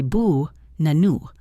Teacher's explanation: The first and last a become schwas. They are weak. Only the middle a is strong.